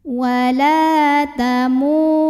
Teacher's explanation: Mu juga mad tabi'i karena ada waw sukun yang didahului baris dhammah, maka panjang mimnya 2 harokat.